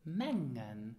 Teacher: So here you have the eng sound. So the letter g is actually not really pronounced.